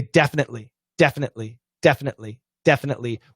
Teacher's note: We say definitely, definitely, definitely, definitely, with either a glottal or a frontal stop.